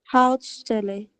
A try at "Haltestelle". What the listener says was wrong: Schau mal, es gibt ein E zwischen Haut und Stelle.